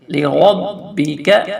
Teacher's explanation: یہ لام دونوں جلدی سے پڑھیں گے اور را کو موٹا کر کے